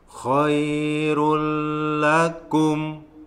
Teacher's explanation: Ini namanya idgham bila gunnah, tidak berdengung.